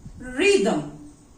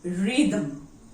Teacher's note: Here TH is coming before the consonant M. So it is supposed to be voiceless. But here it is voiced.